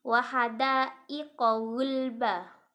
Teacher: Ini adalah mat wajib mutasil karena mat bertemu hamzah di dalam satu kalimat panjangnya 5 harokat.